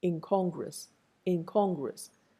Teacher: of the curve that comes after it is a velar sound na is an alveolar sound the alveolar sound becomes pushed backward